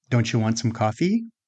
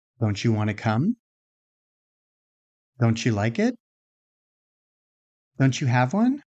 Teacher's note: Notice that we're not simply deleting the t. The t and the y are interacting and producing a new combined sound.